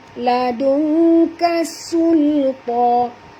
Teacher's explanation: Nun mati bertemu kaf, kita kena sorokkan bunyi nun ini pada kadar separuh ke dalam huruf kaf dan dengung.